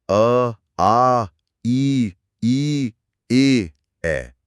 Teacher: इन्हें बोलते समय होठ गोल नहीं होते बल्कि फैल जाते हैं। तो ये अवृत्तमुखी हैं।